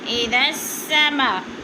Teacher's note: اذا السماء انشقت، اذا السماء پہ مد ہو رہی ہے، مد متصل، حروف مدہ کے بعد حمزہ اسی کلمے میں ہے تو مد متصل ہو رہی ہے۔ 4 الفی مد ہے، 4 الف کے برابر کھینچ کر پڑھنا ہے۔